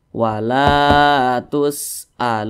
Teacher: dah dan posisinya tepat berada ada di belakang huruf wa sukun maka dia dibaca panjang Mad thobii panjangnya dua harakat atau kira-kira dua ketukan